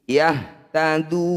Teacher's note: Du panjangkan 6 harokat, sukunkan huruf terakhir. Yahtaduna ketika berhenti. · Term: mad arid disukun